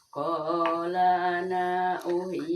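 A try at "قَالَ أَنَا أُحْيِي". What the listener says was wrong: Eta mah pendek karena qala ana uhyi.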